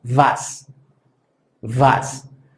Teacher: La W o W, que en alemán es la que se llama V, suena como debería sonar nuestra letra V en general. Esto es un sonido labiodental.